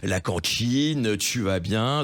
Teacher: cet ajout d'une chuintante derrière une consonne occlusive, voilà ce qu'on appelle l'africation, qui est très ancien dans notre langue, mais qui est là encore un marqueur d'une communauté.